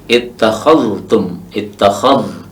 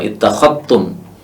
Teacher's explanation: Syu'bah membacanya dengan mengidghamkan, memasukkan dzal pada ta.